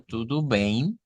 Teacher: el diptongo EI en este caso que se produce pues por la combinación de la E y la M y nasalizamos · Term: nasalización